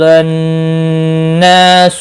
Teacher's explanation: نون مشدد پر گنہ ہوگا، الف مدہ بھی ہے، ایک الف کے برابر کھینچ کر پڑھیں گے۔